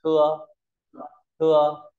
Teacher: chữ t này ta đọc à tưa tưa tưa tưa t dồng chữ thờ ta bật nhẹ hơi · Tờ giống cái thờ, nó bật nhẹ hơi này, thưa thưa.